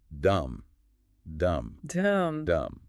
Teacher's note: The instructor demonstrates this with the syllable dum, dum, dum. You can actually hear the lips rounding in the recording. The shape of the Damma literally reflects the physical shape your lips need to make.